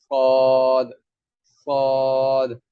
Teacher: صاد کو ادا کرتے ہوئے زبان کی جو جڑ ہے وہ بھی اوپر کی طرف اٹھائیں گے